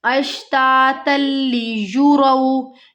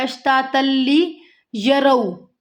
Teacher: यहाँ पे भी हमारी अक्सर गलती होती है अश्तातल्ली यरौ। ये या के ऊपर पेश की हरकत है तो युरौ पढ़ना है हमें, यरौ नहीं पढ़ना